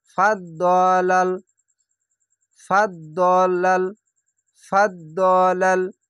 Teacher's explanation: দটিকে মোটা অক্ষর, তার জন্য দ মোটা করে পড়বেন